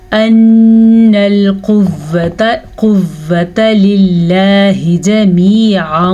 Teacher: نون کا غنہ آپ نے ادا کرنا ہے، نون پہ شد ہے ، قاف کو پر پڑھنا ہے، لفظ اللہ کو باریک پڑھنا